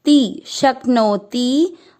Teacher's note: ती की मात्रा बड़ी है इसलिए उसको लंबा खींचेंगे